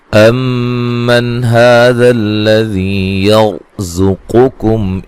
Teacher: زا کو زور سے سیٹی سے ادا کریں گے ، میم ساکن کا یہاں اظہار ہے، غنہ نہیں کریں گے،